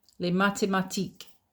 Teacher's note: There's the accent again. You don't pronounce the S at the end